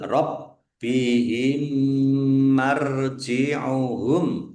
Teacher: Mim sukun bertemu dengan huruf mim. Bacaan idgham mutamasilain atau idgham mimi. Mendeng mim ditandai mimnya ada tasdidnya ditek ditahan biar tampak mendengung. · Bnya dibaca dobel ada tasdidnya ditekan biar tampak dobel.